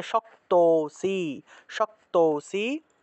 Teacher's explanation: তাহলে অথয়েতদপ্য শক্তোসি, শক্ত, এখানে দেখো একটা লুপ্ত আছে। লুপ্ত অ থাকলে আগের অংশটাকে একটু টান দিয়ে উচ্চারণ করতে হয়, আগের স্বরটাকে একটু টান দিয়ে উচ্চারণ করব